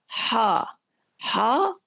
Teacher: खा बिल्कुल ऊपर वाले हिस्से से, यानी जुबान की जड़ के पीछे जहां से हलक दरअसल वहां पे खत्म हो रहा है वहां से खा निकलेगी, और हा ये वस्ते हलक से, दरमियानी हलक से आवाज उसकी निकल रही है · हलक के दरमियानी हिस्से से अदा हो रहे हैं ये 2 हरूफ आइन और हा